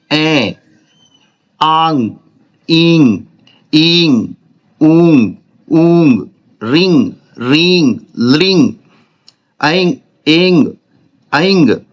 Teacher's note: मुख के साथ नाक से बोले जाने वाले स्वर अनुनासिक स्वर होते हैं